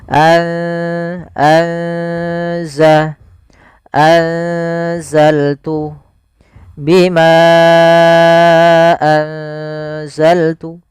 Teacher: Kalau izhar suara nunnya diperjelas dan sedangkan ikhfa di antara keduanya sehingga nunnya samarkan ke zai anza atau biasa lebih mudah untuk memperingatnya pakai ng g atau ng gitu ya.